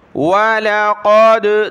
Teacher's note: وَلَقَدْ دال پر قلقلہ ہوا